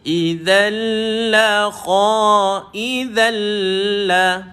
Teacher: idza dah ujung lidah dikeluarkan